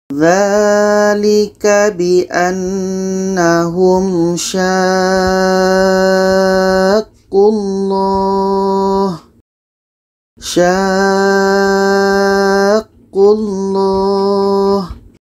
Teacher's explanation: 6 harkat baru masuk ke huruf yang ada tasydid kita baca kita panjangkan 6 harakat baru masuk ke bah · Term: mad lazim kilmi mutsaqqal